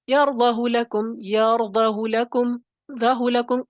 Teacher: یرضہ لکم، ذہ لکم، اشباع کے بغیر آپ نے آگے اس کو پڑھنا ہے